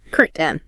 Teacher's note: Or very commonly it becomes curtain n with a stop key. Like you stop the air but don't release the curt N.